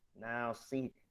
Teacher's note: Kalau ra sebelumnya kasrah maka dibaca tipis.